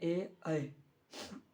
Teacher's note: उसके बाद याद रखना कंठ और तलव्य। कंठ और तालु से होने वाला वर्ण का उच्चारण है ए, ऐ